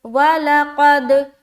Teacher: قاف کو منہ بھر کر بولنا ہے، کیونکہ قاف موٹے حروف میں سے ہے، حروف مستعلیہ میں سے ہے، جو کہ موٹے حروف کہلاتی ہے۔